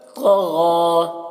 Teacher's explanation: تو کو موٹا کر رہے ہیں اور غین کو بھی موٹا کر کے پڑھا جا رہا ہے